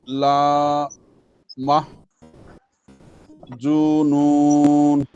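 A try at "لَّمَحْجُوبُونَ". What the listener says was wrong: জুবুন হবে, নুন না।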